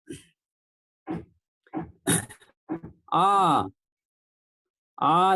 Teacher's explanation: आ जब करते हैं तो इसमें जीभ का जो पिछला हिस्सा है उसका ज्यादा प्रयोग होता है। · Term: पश्च स्वर